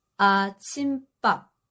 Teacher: when two separate words combine into one compound word, the boundary between them is marked by stop sound, and that stop sound naturally makes the next consonant a tense sound.